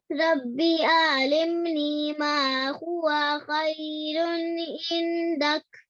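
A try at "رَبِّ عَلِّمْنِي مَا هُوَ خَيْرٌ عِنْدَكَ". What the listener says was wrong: Over here, I'd just like you to join the ayn to the lam with a bit more force. Okay, so alimni.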